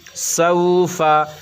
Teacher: مگر یہ واو لین ہے، اس کو معروف پڑھنا ہے، مجہول نہیں. سوفا اگر ہم پڑھیں گے سین واو زبر سو تو یہ مجہول ہو جائے گا.